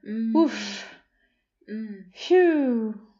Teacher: kind of breathy and kind of had a medium pitch I would say and also going down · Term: sigh